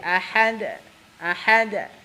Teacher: jalur yang paling gampang yaitu dipantulkannya mendekati fathah nya jadi mantulnya itu kef mendekati t bukan fathah banget tapi